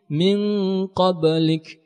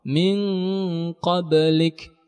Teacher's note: Karena huruf qalqalahnya berada di pertengahan kata dan bacaan masih kita wasalkan. Qalqalahnya ada kita ucapkan tetapi pantulannya kecil karena bacaan sedang kita wasalkan. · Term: qalqalah sugra